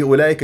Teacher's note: اجتمع حرف المد والهمزه بكلمه واحده هذا مد واجب متصل يمد اربعه وخمس حركات